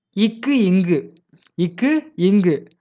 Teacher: இக்குங்கிறது நாக்கோட அடிநாக்கும், அன்னமும் வந்து பொருந்துவதால இக்கு, இங்கு பிறக்கின்றது